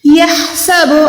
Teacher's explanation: ہا جو ہے حلق کے درمیان والا ہے. یہاں پر آپ نے حلق کے درمیان سے، یعنی جہاں پر بون ہوتی ہے، ہڈی ہوتی ہے حلق میں، آپ نے وہاں سے ہا کو نکالنا ہے. یحسب ان.